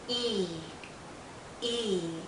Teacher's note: our lips are very spread very pulled out and this is a long vowel sound